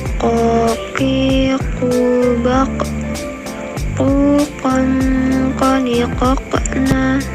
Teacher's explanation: keluar dengan menyentuhkan pangkal lisan dengan langit-langit bagian belakang. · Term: huruf ko